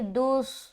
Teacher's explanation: اس کے بعد دال صاد پیش دس، دس، دس، ٹھیک ہے۔ صاد سے جیسے ہی دال صاد سے ملے گا آواز میں ایک موٹا پن آئے گا